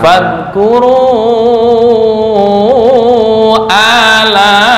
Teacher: Ini A panjang. A kepanjangan, hanya 2 harokat, nggak boleh lebih, nggak boleh kurang.